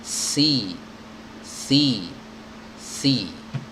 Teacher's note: ujung lidahnya ya bertemu dengan ujung gigi seri bagian atas. Ujung ketemu dengan ujung. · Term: huruf sa